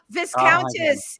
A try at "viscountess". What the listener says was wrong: Viscountess. The S is silent.